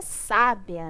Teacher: Na palavra sábia, a sílaba tônica é o sa. Então, ela é uma proparoxítona.